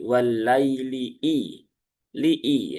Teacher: Kemudian idza ya, i-nya pastikan kasrah terbaca i ya, bukan e ya, bukan idza tapi i. Dan pastikan hamzahnya juga tahqiq ya atau jelas. Jangan walaili, walaili tapi walaili i.